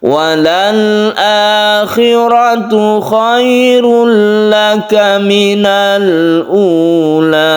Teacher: khairul laka ini idgham bila gunnah, tidak berdengung.